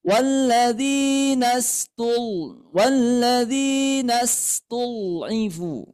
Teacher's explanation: Kemudian ain berharakat kasrah ya. Ini harus jelas i. Kasrah itu bunyinya huruf vokalnya i.